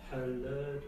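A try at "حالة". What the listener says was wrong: Non, tu dis la. Parce que si tu dis hala, c'est comme si c'était une prolongation. Ha. Latu. Halatu.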